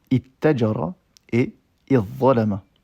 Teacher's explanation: le ta de la huitième forme s'assimile à la première radicale quand celle-ci est une des lettres suivantes, ta, tha, da, dha, ta ou dha.